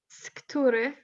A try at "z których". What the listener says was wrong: Oh, that was really good.